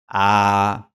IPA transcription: a